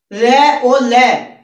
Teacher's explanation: र और ल, इन दोनों का उच्चारण जीभ के साथ साथ मसूड़ों से बोला जाता है, अर्थात मसूड़ों को संस्कृत में बत्स बोलते हैं, इसीलिए इनका नाम बर्तस्य व्यंजन हो जाता है।